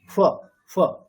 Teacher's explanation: দুটো অষ্ঠ পুরোপুরি স্পর্শ না করে একটা ফকার বলতে হবে। ওটাই আমাদের উপধানীয় বা অর্ধেক ফকারের উচ্চারণ।